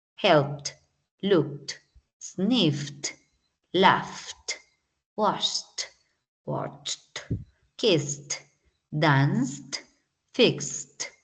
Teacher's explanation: si termina con K y después la D, pues se pronuncia con T.